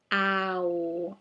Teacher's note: Our mouth goes from open, ah, a vertical plane of movement, to horizontal. Ooh, a horizontal plane of movement. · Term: diphthongs